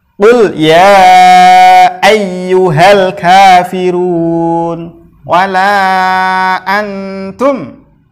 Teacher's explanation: awalnya dia mad tabi'i, kemudian di depannya mad tabi'i itu ada alif, maka dia dibaca sampai 5 harokat. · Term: mad jaiz munfasil